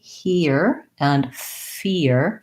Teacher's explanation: between the E and the ear, if I go really slowly, because I'm gliding from the E to the ear, there is a little bit of a Y in there. · we don't really have a ya in those words it's just an e er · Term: glide